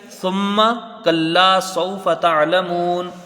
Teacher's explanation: دوسری آیت دیکھیں، ثم کلا سوف تعلمون، تو کلا سوف جیسے یہاں ہے ویسے یہ بھی ہے، یہاں صرف ثم، سا کو میم سے ملا کر پڑھا جائے گا، میم میں غنہ ہوگا ایک الف مقدار، کیونکہ میم مشدد ہے